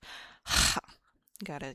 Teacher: You gotta have that rattle in the back of your throat. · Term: spicy H